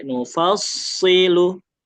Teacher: Jadi enggak cepat-cepat islahin atau nufasilu enggak tapi nufassilu. Jadi alirannya atau durasinya agak lebih panjang karena dia masuk kategori yang mengalir sempurna.